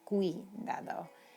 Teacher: this little U isn't pronounced very strongly, but when combined with the I, it is strong